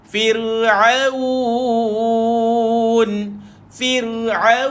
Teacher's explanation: macam mana kita nak baca firun ni dia banyak pergi kat hidung jadi kena hati-hati firun Firaun dengan hidung buang kat hidung Tuan